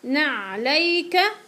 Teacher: اذا بدي اوقف عليها بدي اقول نعليك وبهمس